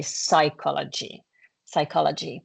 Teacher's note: in English you kind of skip the P